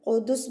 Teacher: وقف کی صورت میں یہ سین جو ہے یہ ساکن بن جائے گی، قدس بن جائے گا.